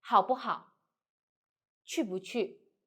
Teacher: And if 不 in this one, adjective plus 不 adjective. So in this situation, 不 should be read like light and short.